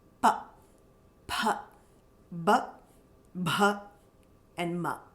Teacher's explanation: And then oshtya, relating to the lips, coming from the lips.